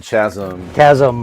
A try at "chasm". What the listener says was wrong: Chasm. The H is silent.